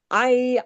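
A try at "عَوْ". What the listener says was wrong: آئی. آئی نہیں، آؤ. آئین واو زبر.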